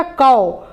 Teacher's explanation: औ की मात्रा का उच्चारण थोड़ा लंबा खींच कर किया जाता है।